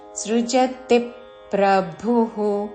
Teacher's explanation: తి మీద ఆఘాత పక్కనున్న సంయుక్త అక్షరంలోని ప ద్విత్వం చేస్తూ సృజతి ప్రభుహు మహాప్రాణక్షము భు తర్వాత విసర్గ లోకస్య సృజతి ప్రభుహు నకర్మఫల సంయోగం